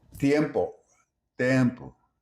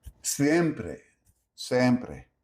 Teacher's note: Spanish keeps the diphthong. Portuguese simplifies it.